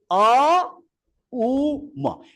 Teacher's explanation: শুরু হচ্ছে কণ্ঠ থেকে, উচ্চারণ বর্ণের শেষ হচ্ছে কোথায়? ওষ্ঠতে। আর মাঝখানে দিয়েছে উ, উ যেন এখানে জিহ্বামূলিতে যে শক্তি, সেটা যেন গড়িয়ে যাচ্ছে, গড়িয়ে গিয়ে শেষ হচ্ছে গিয়ে মা, মা, তাহলে অ, উ, ম, এই যত বর্ণ আছে, এই এই সবগুলো স্পর্শবর্ণ উ দ্বারা শুরু হলো, অ শেষ হলো ম, হুম।